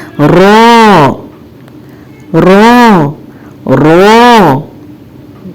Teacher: जबान की नोक मसूड़े से थोड़ी दूर हो जाती है, जिसकी वजह से सुराख का सा फासला पैदा हो जाता है और इसी फासले से आवाज बाहर आती है